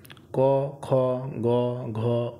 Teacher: এগুলোর উচ্চারণ স্থান কন্ঠ। তাই এগুলিকে কন্ঠ বর্ণ বলা হয়। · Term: কণ্ঠবর্ণ